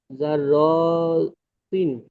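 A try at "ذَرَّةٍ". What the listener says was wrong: র কে টান দিচ্ছেন কেন তাড়াতাড়ি পড়েন।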